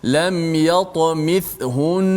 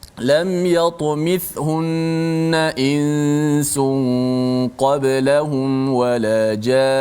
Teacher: Nun sabdu, walaupun ketika wakaf tetap dibaca panjang dengung itu.